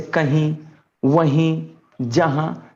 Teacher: मुंह और नाक दोनों से हवा निकलती है। हालांकि ये जो यहां पर जो बिंदु का इस्तेमाल हुआ है, यानी अनुस्वार का इस्तेमाल हुआ है, ये वास्तव में यहां अनुनासिक होना चाहिए था।